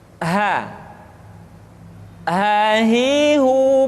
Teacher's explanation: huruf H dikeluarkan dari tenggorokan yang terjauh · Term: huruf ha